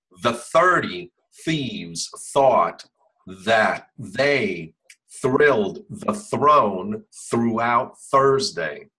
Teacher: my tongue almost stays out the whole time